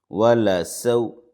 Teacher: واو لین ہے، واو ساکن سے پہلے زبر ہے، نرمی سے جلد ادا کریں گے